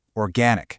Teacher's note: With organic, we're looking at a couple of key details. That first or sound is crucial, but so is that open a vowel in the stressed syllable